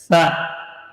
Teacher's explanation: Sa huruf hamas dan rakhawah. Sa dia mengalir udara dan suara, tapi tidak berdesis.